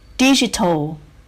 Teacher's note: Digital. We stress the first syllable.